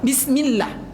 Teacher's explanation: sebelum alif lam lafaz Allah itu terdapat padanya huruf yang berbaris di bawah, maka dia dibaca tipis.